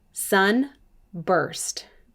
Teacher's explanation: this is a two-syllable word i hear the er sound in the second syllable